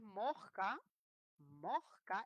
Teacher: la que te crees mosca, moj, con la aspirada